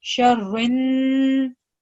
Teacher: So over here when we're joining ra with noon shadda, we know that ever we have noon shadda, we hold down the noon hunna sound for 2 seconds